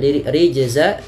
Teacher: menandakan bahwasanya ia bacaan qalqalah, yang dimana dalam melafalkannya harus dipantulkan